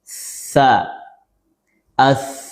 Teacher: sifat hams, mengalir atau terlepasnya nafas saat huruf ini diucapkan. Tsa as kemudian rakhawah mengalirnya suara atau nafas ketika huruf dimatikan sukun. · Memiliki 5 sifat. Ada sifat hams, mengalir atau terlepasnya nafas saat huruf ini diucapkan